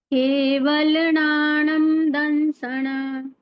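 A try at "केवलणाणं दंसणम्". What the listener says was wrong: ठीक है, दंसनम शब्द है, और फिर दंसन पे अंक की मात्रा, दंसनम यानी आधा में है, और उसके बाद है अनंत, तो वो आधा में और अनंत का अ मिलके म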